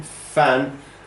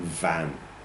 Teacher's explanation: they both are produced in the same way. Vocal cord action is different.